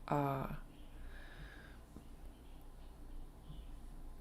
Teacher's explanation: And your vowel sounds good too. You have a long, low A.